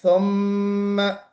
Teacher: ثم میں سین نہیں نکالا ہے. ثم پھر لتس لتسألن، کوشش کیجئے سین کی سیٹی بجے.